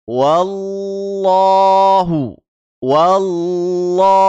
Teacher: mentasdid huruf lam wallah sambil mengangkat lidah belakang kita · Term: lafaz Allah yang ditebalkan